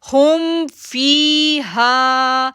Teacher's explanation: ہم پڑھیں گے، دیکھیں، ہا پیش میم ساکن ہم، ہم، فا زیر یا ساکن فی، ہا الف زبر ہا، ہم فی ہا، ہم، دیکھیں ہم میم کو ظاہر کر رہے ہیں، اظہار ہے، ہم فی ہا، ہم فی ہا، ہم کو جو ہے وہ غنہ بھی نہیں کرنا لیکن ظاہر کر کے اس کو پڑھنا ہے